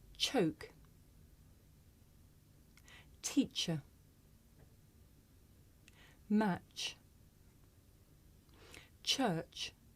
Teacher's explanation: at the post alveolar position in english we have one voiceless affricate this is a voiceless consonant